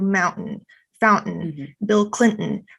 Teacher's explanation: And then your constraint would be something like in this pattern, to becomes a glottal stop, which is that like pause · in many dialects, the T will actually become a glottal stop.